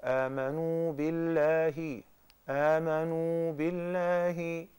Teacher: We just stretched out the little ضمة of آمنوا. Because there is مادة طبيعية there.